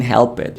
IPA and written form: hɛlpet (helped)